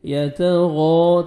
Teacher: تا کو باریک پڑھیں گے، غین کو موٹا کر کے 1 سیکنڈ کھینچنا ہے ، الف مد ہے، یتغامزون زا کو زور سے پڑھیں گے